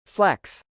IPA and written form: flˈɛks (flex)